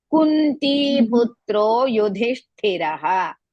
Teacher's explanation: Kunti, Pu is Hrisva, Ti is Dirgha. Putro, Pu is Hrisva.